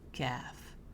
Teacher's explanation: Has more air when you pronounce it. It's kind of like the letter K, but you're going to smile when you say C gaff.